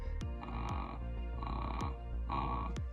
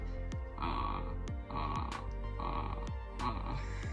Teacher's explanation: it's where you relax your vocal cords as much as possible while vibrating them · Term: vocal fry